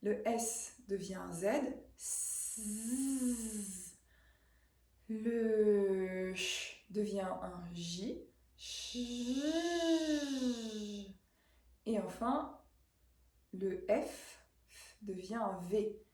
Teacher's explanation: Donc on va reprendre les consonnes du début, S, Ch, F, mais qu'on va voiser, c'est-à-dire on va mettre la vibration des cordes vocales par-dessus ces consonnes soufflées, non voisées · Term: consonnes voisées